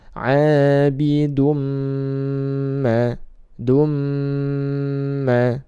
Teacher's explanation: Dan dhammatain bertemu dengan mim, maka dibaca idgham bi gunnah. Tanwin dhammah bertemu dengan mim, idgham bi gunnah, dimasukkan ke huruf mim dan ditahan 2 harokat.